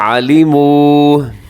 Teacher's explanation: لمبا کیجئے گا عَلِمُوا کیونکہ آخر میں واو مدہ ہے. لمن اشتراہ، اسے اپنے توجہ سے سننا ہے کیونکہ زبر زیر پیش کی اس میں عام طور پہ غلطی ہو جاتی ہے، لمینش ہو جاتا ہے.